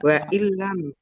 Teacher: Waillam yantahu nun sukun bertemu dengan huruf lam. Bacaan idgham bila ghunah masuk dengan tidak mendengung. Langsung masuk ke huruf lam tetapi tidak mendengung.